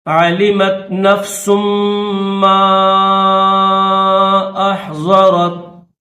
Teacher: علمت نفس ما احضرت، میم مشدد ہے تو سین کو میم مشدد کے ساتھ ملائیں گے اور الف کے اوپر مد منفصل ہے تو 3 سیکنڈ نہیں بلکہ 4 سیکنڈ کھینچیں گے.